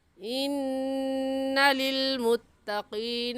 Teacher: انّا میں نون مشدد ہے، اس وجہ سے یہاں پر غنہ کریں گے